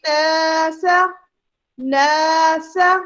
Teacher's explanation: نون مشدد موجود ہے جس کو ہم نے بہت اسٹرانگ غنہ کرنا ہے